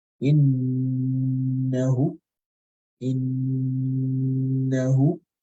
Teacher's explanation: And so this is an example of Ghunnah with with shadda, a meme or a noon with shadda. And this Ghunnah will last for 2 counts on this scenario.